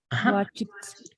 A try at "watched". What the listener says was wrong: Like it has to be like watched, watched. It's like two consonants, right? The ch and the t.